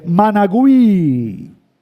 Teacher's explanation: En el taíno existía un sonido doble I, que el hablante español no lo soportó y lo transformó.